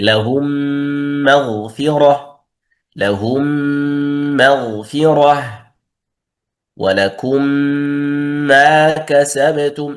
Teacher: يعني عندنا ميم ساكنة وميم متحركة، أدخلنا الميم الساكنة في المتحركة بحيث يصيران حرفا واحدا مشددا كالثاني. حروفه الميم، ميم ساكنة مع ميم متحركة. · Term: الإدغام الشفوي